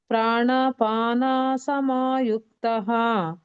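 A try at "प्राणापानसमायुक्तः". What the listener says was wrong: ಪ್ರಾಣಪಾನ ನಾನು ದೀರ್ಘ ಹೇಳಲೇಬೇಕು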